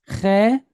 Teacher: So we have a chet again, and it's pointed with segol. Segol, these three dots are kind of a quick shortened E sound